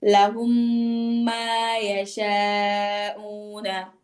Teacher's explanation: মিম সাকিনের পর মিম আসলে তাসদিদ দিয়ে কি করতে হয়, গুণা করে পড়তে হয়।